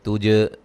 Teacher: جیم پہ قلقلہ کریں گے ، تج، جیم کو ہلا کے پڑھیں گے، زو واولین ہے،